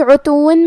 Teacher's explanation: کلمت عتون میں حرف العین ہے اور عین کی ادائیگی حلق کے درمیان والے حصے سے ہے. عین پہ اور تا پہ دونوں پہ پیش ہے، تو ہم یہ دونوں پیش کو برابر سے ادا کریں گے.